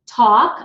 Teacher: I don't pronounce the L so it's tau K walk wau K okay very important that